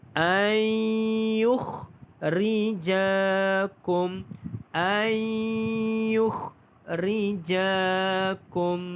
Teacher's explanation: Dan nun ini dimasukkan ke dalam huruf ya. Sebab itu kita baca ai, bukannya an. Ai, nun itu sudah pun dimasukkan ke dalam huruf ya. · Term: idgham ma'al ghunnah